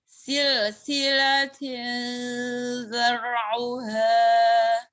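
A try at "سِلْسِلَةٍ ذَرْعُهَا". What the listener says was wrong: Taknya berlebih hamsnya. Jadinya huruf taknya nggak bulet, nggak mantep. Tin, jangan ti.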